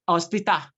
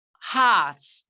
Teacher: The H sound is the glottal sound.